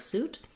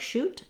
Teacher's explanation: So for some people, it's challenging to make a difference between the sh sound like shoot and the S sound like suit. The letter S sound has my tongue further forward than it is for the SH sound, and just a narrow place of air coming out. So whereas sh had my tongue further back and a lot of air can come out, the s sound is very narrow and constricted.